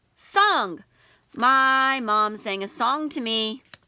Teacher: when we see ng at the end of the word it makes a back of the tongue roof of your mouth sound